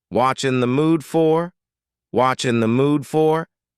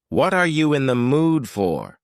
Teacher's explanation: the word r is gone and the word you has been reduced to yah so when we link together what in you super fast watching